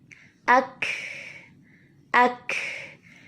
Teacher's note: جیسے ہی ہم نے فورسفلی زبان کو یہاں ٹکرایا تو زبان ٹکراتے ہی شدت کی صفت نمایاں ہوئی اور پھر فوراً ہی زبان نے جگہ چھوڑی اور پیچھے سے تنفس یعنی سانس چلتا ہوا باہر آ گیا اور ہمس کی صفت نمایاں ہو گئی